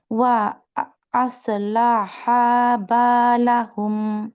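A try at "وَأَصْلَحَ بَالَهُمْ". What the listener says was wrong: এই যে আসলাহা তুমি টান দিলা, আমি হলে বলতাম ওয়া আসলাহা বালাহুম, তুমি আসলাহা বালাহুম, তার মানে এই হাতেও তুমি একটা আলিফ বসাইছো, এখানে একটা আছে। আলিফ গুলো একটু খেয়াল রাখতে হবে, শুধু এখানে আমি ধরলাম লাস্টে, বাট আরো অনেক জায়গায় আছে।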